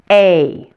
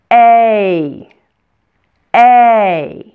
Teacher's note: like this a if you slow it down you notice that it's actually made up of two different vowel sounds first we start with an a sound and then we finish with an e sound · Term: long a, diphthong